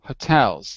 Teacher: you almost have to go almost like a huh rather than a full hoe